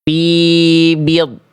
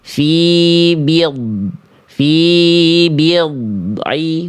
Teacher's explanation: Sifat rakhwahnya tak ada. Buktinya bunyi-nya ini tertahan sejenak sebelum melafalkan ain.